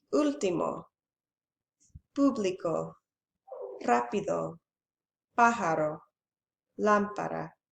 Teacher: El estrés recae sobre la antepenúltima sílaba de la palabra. The stress falls on the third to last syllable of the word. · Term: Esdrújula